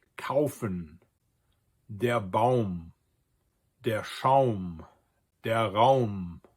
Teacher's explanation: And it's pronounced the same as in Italian or in Spanish. A-U glides together as an AU sound.